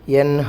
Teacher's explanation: നൂനിനെ വ്യക്തമാക്കി പറയുക, ശേഷം വരുന്നത് ഹൽക്കിൻ്റെ അക്ഷരമാണ്